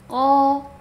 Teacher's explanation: bibir jangan dimonyongkan ko, tapi pangkal lidah kita yang kita naikkan huruf untuk mendapatkan huruf isti'la, huruf tebal.